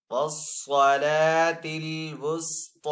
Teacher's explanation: علی الصلوات والصلاة الوسطی، صاد کو یہاں پہ پر پڑیں گے، حروف مصالیہ میں سے ہے، لام کے اوپر کھڑا زبر ہے تو لام کو ایک الف دو حرکات کے برابر کھینچ کر ادا کریں گے